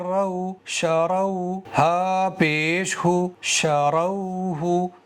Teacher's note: را کو موٹا کر کے پڑھنا چاہیے، یعنی منہ کے اندر ہوا بھر کے پڑھنا چاہیے، اور را کے اوپر اگر پیش آ جائے گا تو بھی را کو موٹا ہی کر کے، پر کر کے، ہیوی کر کے پڑھنا چاہیے۔